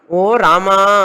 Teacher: రామా అని పిలిచేటప్పుడు ఎవరినన్నా అది హస్వము కాదు దీర్ఘము కాదు ప్లుతం అని అర్థం